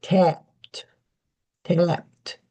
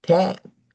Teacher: The P is there. Your lips are closing. Tapped. So the there is still lip closing for the P, but you don't usually hear tap.